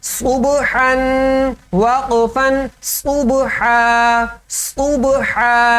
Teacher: صاد موٹا پڑھنا ہے، با پر قلقلہ کرنا ہے